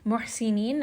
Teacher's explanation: ha is going to be from the middle of the throat. So I'm going to make sure to give it a little bit of that warm air as this letter comes out of the throat. Muhsinin, and then we're going to end here on a 4-count mad.